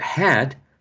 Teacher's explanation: in the word had the initial consonant sound is voiceless